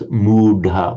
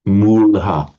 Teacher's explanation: wherever you get a d between vowels, it becomes a l, a subdotted l.